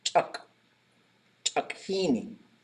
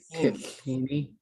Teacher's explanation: Every word goes short and low except for the last one. So that's why chak becomes chuk, chukhini.